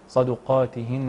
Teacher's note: وتفخيم القاف تفخيما كبيرا لانه في اعلى درجات التفخيم